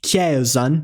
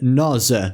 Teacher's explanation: immediately between voice sounds, it turns to a z sound, as in the English cheese.